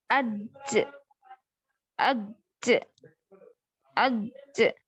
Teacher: اج کہاں رکی آپ کی زبان, اوپر جا کے تالو کو لگ کے رکی, تو یہ آپ کا مخرج ہے. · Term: جیم کا مخرج